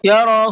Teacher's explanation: ہا کے اوپر چھوٹا مد بنا ہوا ہے، اس کو تھوڑا سا زیادہ کھینچ کر کے پڑھیں گے۔